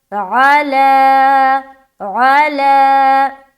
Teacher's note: عین کو بالکل صاف اور واضح طور پر نکالنا، الا نہیں بولنا